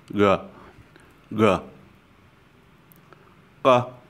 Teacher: this is slightly different from the English G in that the tongue is further back in the throat. It is more guttural sound, g, g, g, kéo.